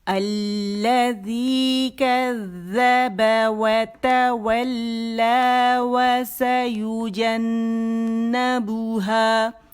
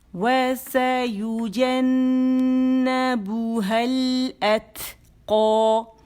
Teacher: ہا کو میں نے اس کے ساتھ جوڑ دیا، الف ڈراپ کر دی